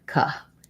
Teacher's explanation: rather than saying co with an O vowel, it has a reduced vowel, sounds like a schwa, sounds more like ka.